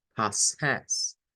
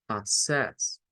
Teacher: No es po, no es una o, no es o redonda, es un schwa.